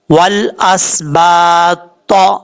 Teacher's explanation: یہاں پر اکثر لوگ غلطی کیا کرتے ہیں، یہ تا ہے اینڈ پہ جس کے اوپر میں نے ایرو رکھا ہوا ہے، یہ تا جو ہے فل ماؤتھ پڑھا جاتا ہے، اور یہ حروف مستعلیہ میں سے ہے